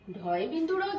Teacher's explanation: তাহলে আমি বলতে পারি ড হচ্ছে অল্প প্রাণ ধ্বনি, আর ঢয় বিন্দুরাও যখন উচ্চারণ করছি, বাতাসের বেগ কিন্তু তখন আমি বেশি অনুভব করেছি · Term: মহাপ্রাণ ধ্বনি